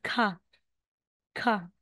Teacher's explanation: Parang may H po siya, may hangin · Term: aspirated